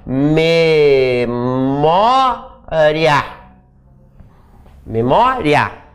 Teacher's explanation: Ele vale meio e ele é a minha semivogal. De semivogal para vogal, cresceu, tá? Então, ditongo crescente.